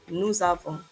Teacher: Notice we pronounce the S here because of the following word which begins with a vowel.